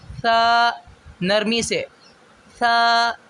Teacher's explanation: ثا کو ادا کرتے وقت سامنے والے اوپر نیچے کے دانتوں کے درمیان زبان کا کنارہ رکھ کے ثا ادا کریں گے۔